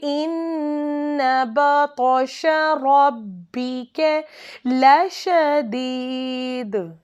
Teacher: نون کے اوپر تشدید آ جائے، رنگنگ ان نوز، وہاں پہ ایک الف کے برابر لمبا کر کے پڑھنا ہے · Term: نون مشدد